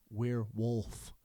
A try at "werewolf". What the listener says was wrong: You have to pronounce the L.